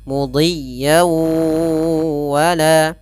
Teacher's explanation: masukkan dulu fathatainnya ke huruf wwnya sambil ditahan suara gunahnya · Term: Idam bunna, idgham bi gunnah